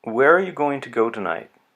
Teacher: Say it as naturally as you can and listen to where the pitch goes. With WH questions, questions starting with who, what, where, when, why, which, or how, we hear a slight fall.